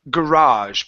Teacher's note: put the stress on the end